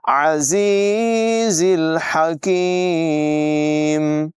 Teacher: زا کو سیٹی کے ساتھ پڑھیں گے